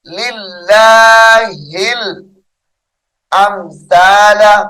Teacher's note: اس میں جلالت اللہ کلام یہاں پر باریک ہے